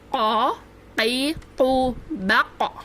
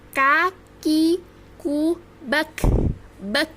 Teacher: Sifatnya hamas saat kaf ini berharokat sukun. Oke, jadi kalau qaf saat berharokat sukun bersifat qalqalah atau mantul, sedangkan kaf ini bersifat hamas